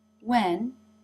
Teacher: and the jaw does not drop as much this is because the word when is not stressed in this sentence it is shortened it is still the as in bed vowel but because it is so quick the mouth does not form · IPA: [ɛ]